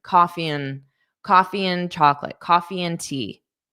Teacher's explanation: So the and becomes an coffee and chocolate, coffee and tea.